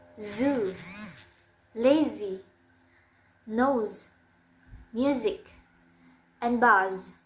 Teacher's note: It's voiced, and the place of articulation is alveolar, and the manner of articulation is fricative.